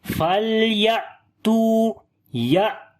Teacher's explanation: On the hamza we make jerk sound because we make shidda quality here. As in shidda we discontinue the sound. So that's why we are discontinuing the sound. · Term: shiddat quality in hamza